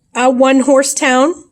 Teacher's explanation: the o sounds like a w so you would be using a consonant sound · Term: w sound